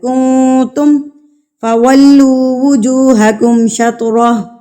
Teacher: مسجد الحرام وحیث ما کنتم فولوا وجوہکم شطرہ، کون پہ نون ساکن آ گیا ہے، تو نون ساکن کے بعد حروف اخفا میں سے تا آ گیا ہے، تو آپ نے کون کو اخفا کرنا ہے، یعنی کہ نون ساکن کی آواز کو ناک میں چھپا لینا ہے، یعنی کہ نون کا جو مخرج ہے نا اس کے ساتھ آپ نے زبان کو ٹچ نہیں ہونے دینا۔